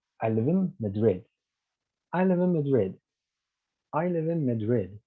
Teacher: we use a falling tone pattern in order to signify that our sentence has ended